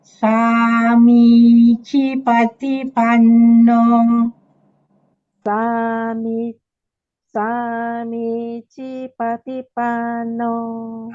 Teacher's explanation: The A is long, the first I is long, and then the second I is short.